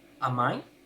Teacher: Por ser pregunta debe tener una entonación ascendente, una entonación de pregunta.